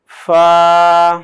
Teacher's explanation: উপরের দাঁতগুলো গিয়ে ঠোঁটের মাঝ বরাবর লাগবে। হ্যাঁ, ফা আরেকটু ছোটা একটু ভিতরে নাও।